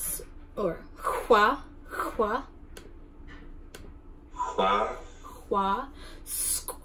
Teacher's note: Pronounced like a C sound with rounded lips.